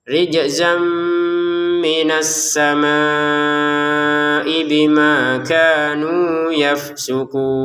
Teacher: ada tanwin bertemu mim, kita masukkan tanwinnya ke mim disertai dengungan